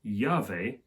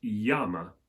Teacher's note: they just went straight for the yes sound represented by a double l · They just went straight for the Y sound represented by a double L. So the clave that we saw in Latin, meaning key, in Spanish that becomes llave, and the same Y sound was used to deal with the Latin flamma.